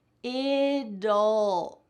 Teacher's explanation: We're adding here a little schwa sound, which is a vowel. So even though we don't see the vowel, we're still pronouncing a vowel, and it's making that T change to a D.